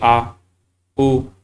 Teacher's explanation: अब पश्च में बोलूंगा जैसे कि आ, उ, तो ये कहीं ना कहीं मेरा जो जीभ है, मतलब जीभ का जो पश्च वाला हिस्सा है, वो इनका उच्चारण करने में सहयोग कर रहे हैं